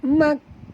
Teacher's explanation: makani dekat nun ada tasydid kena dengung kerana nun adalah huruf gunnah. Ya, huruf kaf bukan huruf gunnah ya.